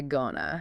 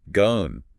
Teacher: the word to completely disappears into the word going. It just becomes a soft, easy gonna.